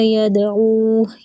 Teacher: دال کے اوپر کلکلا ہوگا اور مد منفصل ہے